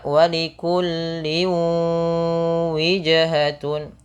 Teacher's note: ketika sudah dimasukkan ditahan dengan gunnah sepanjang 2 harokat. Maka walikulli wijhatun, bukan hanya sekedar masuk, bukan hanya sekedar walikulli wijhatun, tapi tahan dulu 2 harokat. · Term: idgham bi gunnah